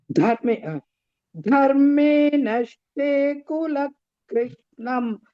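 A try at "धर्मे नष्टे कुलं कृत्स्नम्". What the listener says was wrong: Kulam ing, Bhagini. You are missing that anuswa there. Dharme nashte kulam krishnam.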